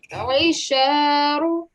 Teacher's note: try and give the sound of the ayn from the middle of the throat